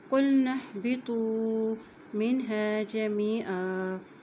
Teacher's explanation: نون کی زبر کو ہا کے ساتھ ملائیں گے، ہا کے اوپر جزم ہے